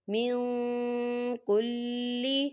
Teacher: ہم نون ساکن کی آواز کو ناک میں چھپائیں گے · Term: اکفا